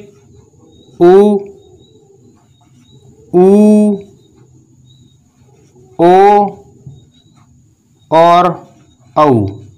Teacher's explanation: मुख की आकृति जो है वृत्ताकार रूप धारण कर लेती है, अर्थात गोलाकार रूप जो है धारण कर लेती है मुख की आकृति। तो ऐसी स्थिति में इन्हें वृत्ताकार या वृत्तमुखी या वर्तुलाकार स्वर कहते हैं।